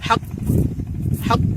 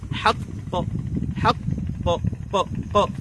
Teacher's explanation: দ্বিতীয় আওয়াজ যেন শোনা যায়, আওয়াজের সাথে যেন দ্বিতীয় কাফের উচ্চারণ শোনা যায়, কালকালার যে আওয়াজ যেমন দ তেমনি ক যেন শোনা যায়।